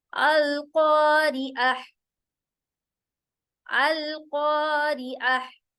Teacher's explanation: सबसे पहले ताउवुज़, अऊज़ु बिल्लाहि मिनश शैतानिर रजीम, तस्मिया, बिस्मिल्लाहिर रहमानिर रहीम, अल क़ारिअह, अल क़ारिअह, कॉफ मोटा होगा, कॉ मोटा होगा, जिसमें स्क्रैचिंग साउंड नहीं होगी